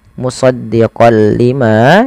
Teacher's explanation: memasukkan huruf tanwinnya kepada huruf lam. Awalnya musaddiqon ketemu lam diganti dengan lam. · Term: idgham bila ghunah